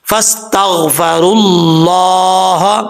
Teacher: اب یہاں پر یہ جو واو آ رہا ہے یہ اس واو کو نہیں پڑھیں گے کیونکہ واو کے اوپر جزم نہیں ہے۔ جب اس کو ملا کے پڑھیں گے تو را کو ڈائریکٹ اللہ کے نام سے ملائیں گے، بیچ میں واو گر جائے گا۔